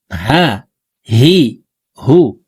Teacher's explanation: এই হাটি হলকের শুরু থেকে উচ্চারণ করতে হবে